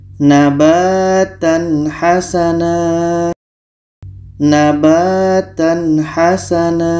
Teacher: dibaca jelas tanwin jelas ha jelas dan di sini tidak ada dengung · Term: izhar halq, izhar halqi